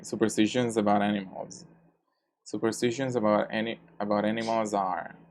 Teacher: the last consonant sound, which is the L sound, is voiced. So the plural must be said with Z.